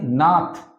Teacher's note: এবার আবার চলে আসি নাথ, দন্ত ন প্লাস আ প্লাস থ, থ এর পরে কিন্তু কোনো স্বরবর্ণ উচ্চারিত নাই বা হয়নি, তাই এটা হয়ে যাচ্ছে রুদ্ধ দল।